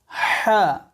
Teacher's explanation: হা বলার সময় কণ্ঠনালীর মাঝখান হতে হা উচ্চারণ হবে এই হা কে বলা হয় হায়ে হুত্তি অর্থাৎ হা এ এমন